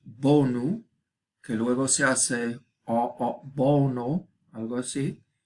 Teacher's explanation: También bonu, que luego se hace bono, algo así, y luego se convierte en diptongo. Este sonido O, en posición acentuada, se convierte en, pues, diptongo